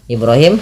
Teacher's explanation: Kemudian pada lafal Ibrahim, Ibrahim ba-nya dipantulkan ya teman-teman. Di sini ba-nya dipantulkan karena ia ada bacaan qalqalah. Ro dan hi sama mad tabi'i, ro kecil.